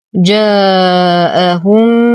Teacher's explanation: ميم ساكنة وبعدها أخرى متحركة، فالحكم إدغام مثلين مع غنة أكمل ما تكون